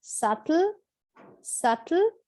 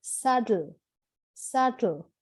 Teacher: The next word is, like the word itself, you pronounce it quite gently. It's, if you're a British, you would like to pronounce very clear T sound, or if you follow the US accent, they like to pronounce the T like a D. So it is subtle, subtle, or saddle, saddle, with the B silent.